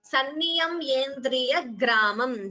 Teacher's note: after ya, there is a dvitvam, that is a double sound.